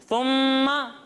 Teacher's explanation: جب ہم سا کو پڑھیں گے تو اس میں سیٹی کی آواز نہیں آئے گی